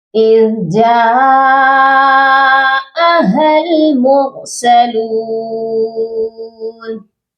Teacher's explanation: جیم کے ساتھ مد متصل ہے، جس کو ہم نے 5 الف کے برابر لمبا کر کے پڑھنا ہے